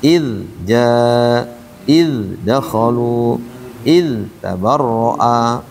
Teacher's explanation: Dia mengalir karena dia punya sifat rikhwah kan. Id ja, id dakhalu, id tabarra, mengalir.